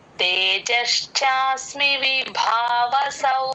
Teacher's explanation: మహాప్రాణం ఉంది విభావసౌ స ప్లస్ ఔ ఔకారం కరెక్ట్ గా పలకాలి విభావసౌ నోరు ఇలా రౌండ్ గా అవుతుంది ఔ పలికినప్పుడు